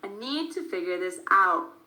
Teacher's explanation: It is stressed, but we don't release that final T. We put our tongue in place to create that T sound, but we don't release it.